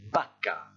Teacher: Ensuite, ce mot-là qui désigne une vache se prononce, écoutez bien, vaca. Et c'est la première lettre, le V ici, qui ne se prononce pas comme en français. Vaca se prononce comme un B français.